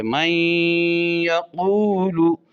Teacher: من یقول، اب یہاں پر نون کا جو یا سے تعلق ہے یہ قریب المخرج نہیں ہے، قریب الصفات ہے، تو نون یا میں داخل ہو رہا ہے، نون کی صفت غنہ باقی رکھی تو یہ ادغام متقاربین ناقص ہوا، کیونکہ ناقص کی تعریف یہ ہے کہ پہلے ساکن حرف کی کوئی نہ کوئی صفت باقی رہے۔